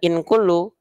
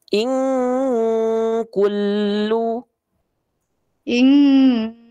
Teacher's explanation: Nah, bukan inkulu, nun sukun ketemu kaf, fa. Jadi dia disamarkan dan dengungkan dengan dengungan yang kuat. Jadi betul-betul eng bunda.